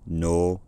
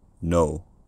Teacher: Modern Irish accents, at least to my knowledge, generally vary between a monophthong, no, and a fairly narrow diphthong